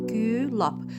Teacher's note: Gülab sözündə Ü incədir, A qalındır. Deməli, ilk hecası Ü incə ilə başlayır, son hecası A qalınla başlayır.